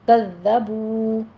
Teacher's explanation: बू में वाव मद्दा है, दोनों होंठों को गोल करते हुए 2 काउंट करना है